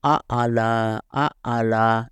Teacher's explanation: یہ گلے کی وائبریشن سے تھر تھراہٹ سے یہ آواز پیدا ہوتی ہے اور سانس باہر اور گلا اندر کی طرف پچکتا ہے جب آئین کی آواز نکلتی ہے